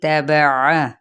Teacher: عین کو وسط حلق سے ادا کرنا ہے